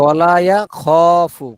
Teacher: খতে একেবারে টান হবে, ওয়ালা ইয়া খফু, খ একটু টান দিয়ে ওয়ালা ইয়াখফু উকুবাহা।